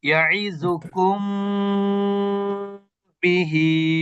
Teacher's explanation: যে কুম বলে অপেক্ষা করলাম, স্টে করলাম, এটাই হচ্ছে গুন্না